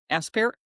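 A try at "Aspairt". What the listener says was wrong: You don't pronounce the T.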